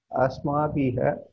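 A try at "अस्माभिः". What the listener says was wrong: Asmabhihi. Not asmabhiha. Asmabhihi. Not bhiha. Visarga takes sound of the preceding vowel.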